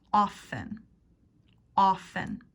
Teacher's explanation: In often, the T is silent.